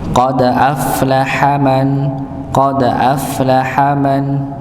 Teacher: huruf fa, ketika dia sukun maka dia nampak dialirkan